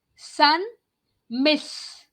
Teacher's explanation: The way you say sun, there is a friction.